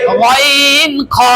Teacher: তিন নাম্বার মাখরজ হলকের শেষ হইতে ওয়াইন খ